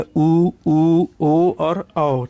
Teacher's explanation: वृत्ताकार। आप उच्चारण करके देख सकते हो होंठ की आकृति इसमें गोल होती है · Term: वृत्ताकार स्वर